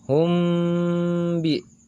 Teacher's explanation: jika terdapat mim sukun bertemu dengan huruf ba maka secara hukum tajwid disebut Ikhfa Syafawi dibacanya harus melebur masuk ke huruf ba dan didenggungkan · Dibacanya harus melebur masuk ke huruf ba dan didengungkan.